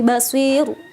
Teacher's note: Dan bacaannya pun tarkik ya, tipis. Gak boleh basir gitu.